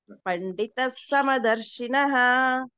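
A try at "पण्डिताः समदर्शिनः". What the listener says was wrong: దీర్ఘం ఉంది మేడం. పండిత సమదర్శినః.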